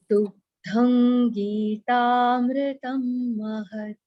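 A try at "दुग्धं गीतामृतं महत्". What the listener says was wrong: So Mahatta we will not say, we'll say Mahat Halanta.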